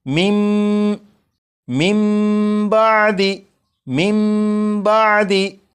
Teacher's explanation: जब नून साकिन के बाद बा है तो इस नून साकिन को फिर नहीं पढ़ेंगे, बल्कि नून साकिन को मीम से बदलेंगे और गुन्ना करके पढ़ेंगे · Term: इकलाब